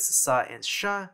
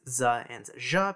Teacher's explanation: fricatives /s/ and /ʃ/ become voiced /z/ and /ʒ/ between vowels